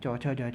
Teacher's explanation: चौ वर्ग को तालव्य से बोला जाता है और स्पर्श संघर्षी भी कहा जाता है।